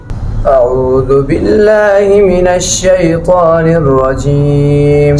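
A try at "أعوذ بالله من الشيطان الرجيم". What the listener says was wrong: Speed slow, तेज नहीं। अऊज़ु बिल्लाहि मिनश शैतानिर रजीम, इस तरह।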